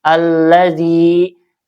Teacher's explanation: Alladzi ini mad wajib munfasil ya. Dibaca panjang 2 atau lima harakat.